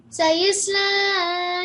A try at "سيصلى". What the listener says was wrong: Sayas. I think you said sayis or something. Sayas with a fatha. Sayas la.